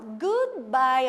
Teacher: a junção das 2 vogais Os, que vai ficar com sonzinho de U